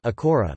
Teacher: A single r is pronounced as an alveolar tap, a kora of that size, but a double r is pronounced as an alveolar trill